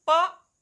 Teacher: प वर्ग का उच्चारण स्थान होता है ओष्ठ, अर्थात जब भी प वर्ग के वर्ण को बोलेंगे आप तो आपके दोनों होठों का इस्तेमाल होगा।